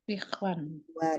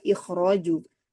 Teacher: Kalau ikhraj, dia tebal, kho-nya tetap mutlak. Kenapa? Karena setelahnya ada huruf ro juga tebal. Jadi dibaca ikhraju.